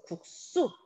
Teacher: 지금 받침이 기역, 디귿, 비읍이다. 그럼 그 뒤는 된소리로 발음을 합니다.